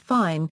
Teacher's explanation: voiceless labiodental fricative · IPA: [f]